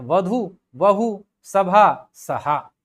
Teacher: भ के जगह पर क्या कर देंगे? ह कर देंगे।